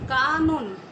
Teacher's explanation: তো এই যে মাঝখানে ও হচ্ছে দন্ত ন, কানন, তাহলে এটার কারণে শুরুতে আ থাকার কারণে মাঝখানের অটা কিন্তু ও এর মতো উচ্চারিত হবে, তাহলে কা নন এভাবে হবে।